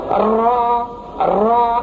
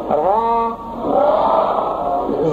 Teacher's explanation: را پر کرتے وقت را میں تکرار نہ ہو، یعنی ایسی طریقے سے را کو نہ پڑھے اس میں کئی راؤں کی آواز آنے لگے.